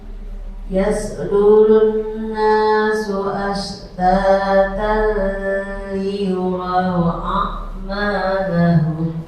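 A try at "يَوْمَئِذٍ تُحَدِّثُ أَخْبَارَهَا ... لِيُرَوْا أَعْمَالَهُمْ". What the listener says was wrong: Lamnya jangan kelamaan. Ashtatal liyuraw a'malahum.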